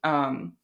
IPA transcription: ʀ